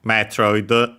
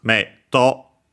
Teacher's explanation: Japanese doesn't have consonants on their own, apart from the nasal one, and so is forced to add a vowel.